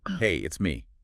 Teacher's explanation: the pitch isn't flat. It goes up slightly on hey, and then it comes down at the end on me. Hey up, it's me down. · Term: Intonation